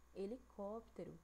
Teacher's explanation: Última, penúltima e antepenúltima sílaba, ó. Como a antepenúltima sílaba dessa palavra é a mais forte, então essa palavra aqui, ela é proparoxítona